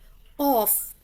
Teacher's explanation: زبان کی جڑ کوے کے قریب نرم تالو سے لگے تو قوف ادا ہوتا ہے